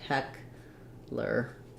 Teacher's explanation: I would think about it like Heckler with first syllable stress